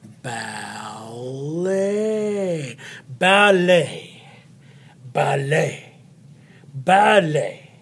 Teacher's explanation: the t is often silent in French when it comes at the end of the word